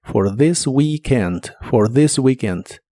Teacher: La th de th this suena como una d vibrante this. Y la doble e de weekend suena como si fuera una i larga o doble.